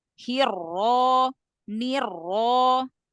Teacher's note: Ro tafhimkan lagi Ro fathahnya ditafhimkan lagi · Ro fathahnya ditafhimkan lagi. Hiro. Langsung pangkal lidah angkat.